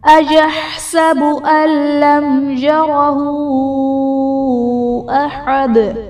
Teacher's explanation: اللم میں نون ساکن کے بعد حروف یرملون میں سے لام ہے تو یہاں پر ادغام بلا غنہ کا قاعدہ ہوگا، یعنی نون ساکن میں ہم غنہ نہیں کریں گے۔